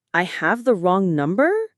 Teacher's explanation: our melody will go up at the end.